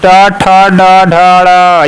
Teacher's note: ये सब मूर्धन्य होता है